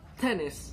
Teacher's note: effect on the airstream it's called stop a full description of the T sound at the beginning of the word like tennis it's a voiceless alveolar stop